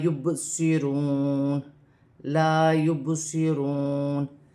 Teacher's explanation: با ساکن ہے، حروف قلقلہ میں سے ہے، قلقلہ پیدا ہوگا۔ واو ساکن سے پہلے پیش واو مدہ بن رہی ہے، ایک الف کی مقدار کھینچ کر پڑھا جائے گا، واو کی صورت میں زبر گر جائے گی اور نون ساکن ہو جائے گی۔